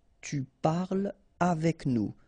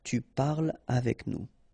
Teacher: so no liaison here between parle and avec